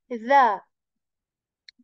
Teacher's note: Okay, so the next letter is a dhal letter, the soft dhal, tip of the tongue. It touches the tip of your upper teeth.